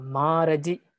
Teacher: this starts with a heavy syllable and the rest are short or light